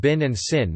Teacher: The target for /ɪ/ is tenser (higher) than in other varieties of English